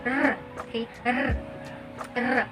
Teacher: the tongue placed near the alveolar ridge and then our tongue curls and vibrates · R sound here is a voiced alveolar approximant wherein the tongue placed near the alveolar ridge.